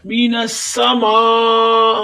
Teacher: ماں پہ آپ دیکھ رہے ہیں کہ مد متصل ہے، بڑی مد ہے، اس کو 4 حرکت تک کھینچ کر پڑھیں گے۔ مینسا ماں حمزہ کو بغیر کھینچے پڑھیں گے، حمزہ کے نیچے زیر ہے، ای، مینسا ماں ای، ماں جو ہے یہ مد متصل کی علامت ہے، یہ دیکھیں بڑی مد اور حمزہ اسی کلمے میں آ رہا ہے، ایک ہی کلمہ ہے ماں تو ادھر مد متصل ہو رہا ہے۔